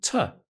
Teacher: the weak form, tuh, which is when the word is unstressed